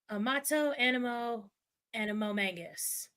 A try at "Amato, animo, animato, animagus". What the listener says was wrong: Yeah, see, that is... You missed like a whole syllable there.